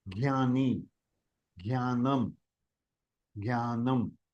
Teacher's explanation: it has a nasal sound because of the anunasika and because it is j along with anunasika the j is pronounced says G.